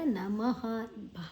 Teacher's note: ಮ ಆದ ನಂತರ ವಿಸರ್ಗದ ಉಚ್ಚಾರಣೆ ಹ